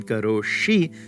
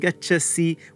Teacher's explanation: she take care to notice that difference between karo shi where the s becomes the retroflex because of their slendy rule and gacha c where the rule